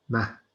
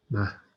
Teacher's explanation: there's the pre-aspiration sound on the C, so it's not mac, it's mac.